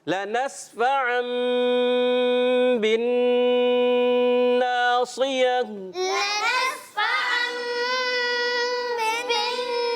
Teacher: دو دو غنے ہیں, دونوں غنوں کو ہم نے پکڑنا ہے